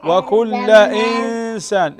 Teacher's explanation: إخفاء هنا نون ساكنة وبعدها السين